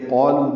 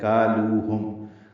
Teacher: کالوہم میں کاف باریک ہے، یہ قالو نہیں ہے